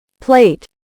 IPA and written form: pleɪt (Plate)